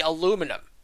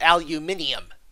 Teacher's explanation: in american english we say aluminum okay continental english adds a syllable and makes it into aluminium